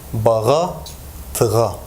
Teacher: Soft G is articulated as H in word final position when preceded by a plus back vowel, and when it's followed by a vowel, it receives voicing and pronounced as a voiced velar fricative. This is in Şanlıurfa dialect.